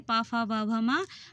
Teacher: और प वर्ग में प, फ, ब, भ, म हमारे होंठों को स्पर्श करके निकलती